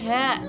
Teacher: bacaan mad tabi'i sebab ha berharokat fathah panjang